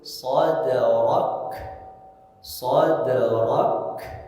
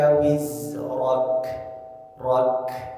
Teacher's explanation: Nah, kemudian di ayat pertama, kedua, dan ketiga ada huruf kaf. Karena kaf itu punya sifat hames, dia mengalir nafas.